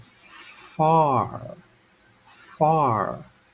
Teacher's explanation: to get the F sound here I have to touch my teeth to my lower lip far r r a common mistake that Learners of English make